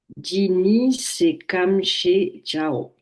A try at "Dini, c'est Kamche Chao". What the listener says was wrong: Quand vous avez dit ni, le ni, c'est deux points, ouvrez les guillemets, hein. Donc faites une petite pause, hein. Dini, c'est comme chez Chao, hein.